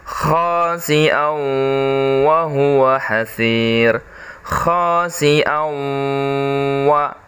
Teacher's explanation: Jadi berubah cara bacanya, masuk. Suara tanwinnya masuk ke dalam huruf wa.